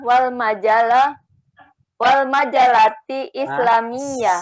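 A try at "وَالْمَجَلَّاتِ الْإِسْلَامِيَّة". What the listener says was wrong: Salah, lamnya bertasydid Ibu. Wal majallatil islamiyah.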